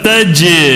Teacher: تو ہم نے وہاں پہ پڑھے تھے قلقلہ کے حروفوں میں سے جیم ہے یہاں پر. تو جیم کے اوپر جب جزم ہو تو وہ قلقلہ ہوگا. ٹھیک ہے، آواز کو ٹکرا کے پڑھیں گے.